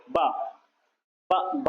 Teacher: जो हमारे जो होंठ हैं दोनों एक दूसरे से स्पर्श कर रहे हैं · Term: ओष्ठ ध्वनि